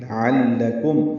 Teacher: لعلکم عین وسط حلق سے ادا ہوگا، لام باریک ہے، کاف باریک ہے، میم ساکن پہ اظہار شفوی ہے